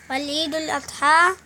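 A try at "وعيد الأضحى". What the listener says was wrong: ول نہیں لکھا بیٹا یہاں پر، وعید الاضحیٰ.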